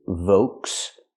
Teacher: In English, we say Volkswagen. Use the V sound like very, v, plus the long O, Volks. The L is silent.